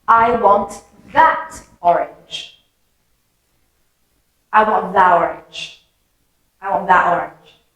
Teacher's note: can you hear that there's kind of a d sound that forms between that and orange